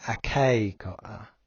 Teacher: So in the aorist, it's a kusa with an emphasis on the a, and the accent still stays on that long a sound in the perfect tense, but it's not at the beginning anymore. So it's ake ko'a.